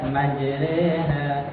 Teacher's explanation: dimiringkan bacanya dan dia dibaca tarkik atau tipis